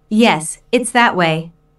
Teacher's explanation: Notice the stress on that. The speaker is pointing in a certain direction and wants to emphasize that direction.